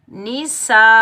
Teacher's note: کلمہ ایک ہے. اسی کلمے میں اصلی حمزہ آ رہا ہے تو بڑی مد کو ہم 5 الف کی مقدار کھینچ کر ادا کریں گے. نون کے نیچے زیر بغیر کھینچے پڑھیں گے.